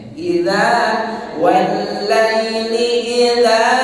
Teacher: Di bagian dari mad asli. Makanya dibaca panjang. Berapa harokat panjangnya? 2 harokat. Jangan lebih, jangan kurang. Maka digambarkan oleh para qari dengan meliupkan bacaan idza, supaya stabil bacaan panjangnya. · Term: mad tabi'i